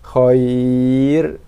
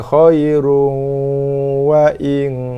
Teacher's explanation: So ra ni dibaca dengan tarkib nipis ketika waqaf. Bila waqaf, ra dah jadi nipis sifat dia.